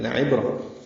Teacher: لام کو لمبا نہیں کرنا، لعبرہ میں لا عبرہ نہیں پڑھنا، لعبرہ عین وسط حلق سے ادا کرنا ہے ، با ساکن پہ قلقلہ، را پر تنوین کے بعد لام